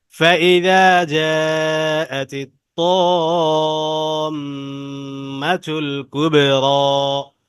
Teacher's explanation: ফাইদা, এখানে দা এক আলিফ টান, যা চার আলিফ টান।